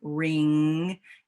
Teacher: that's our nasal sound it's in the back of our throat